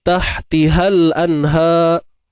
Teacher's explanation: untuk ha pedas ni macam biasa, tengah kerongkong kita sempitkan.